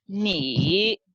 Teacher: So this is the third tone. It falls and rises